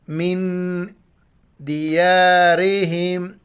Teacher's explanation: نون ساکنہ ہے، یہاں پر ناک میں آواز چھپائیں گے ، من دیارہم، ہا کو میم کے ساتھ ملائیں گے، دیارہم،